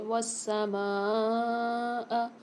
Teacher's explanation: میم کے ساتھ الف مدہ اور بڑا والا مد آ رہا ہے تو یہاں پر ہم اس کو 5 سے 6 الف مدار کھینچ کے پڑھیں گے